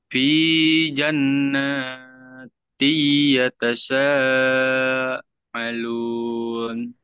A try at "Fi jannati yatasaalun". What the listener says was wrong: fi jannati ya, ari bukan ain ya. Ini hamzah. Fi jannati yatasaalun.